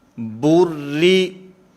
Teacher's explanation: تو یہاں پر بھی کیونکہ را کے نیچے کسرہ ہے، زیر ہے، اس وجہ سے اس را کو باریک پڑھا جائے گا، اس را کو پر نہیں پڑھا جائے گا. با را نام لیتے ہوئے پر پڑھیں گے، لیکن ملاتے ہوئے اس کو باریک پڑھا جائے گا